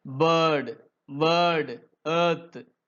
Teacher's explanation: the center of the tongue is raised towards the roof of the mouth. இந்த சவுண்ட pronounce பண்ணும்போது இந்த centre of the tongue எதை நோக்கி போகுதுங்க ரூஃப் ஆஃப் த மவுத் நோக்கி போகுது.